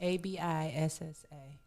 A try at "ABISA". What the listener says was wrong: One S.